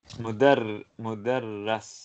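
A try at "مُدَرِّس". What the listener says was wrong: Mudarris. No, no, it is kasra because it is under the shadda. When it is above the shadda, it is fatha. When it is under the shadda, it is kasra.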